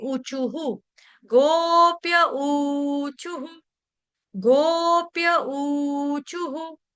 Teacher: विसर्ग विसर्ग का उच्चारण हमने किया आ छोटे उ से मतलब ह और छोटे उ की मात्रा क्यों क्योंकि विसर्ग से पहले शब्द हमारा वर्ण क्या आ रहा है चू उसीलिए इसीलिए क्या हो गया विसर्ग का उच्चारण भी हम हु के साथ करेंगे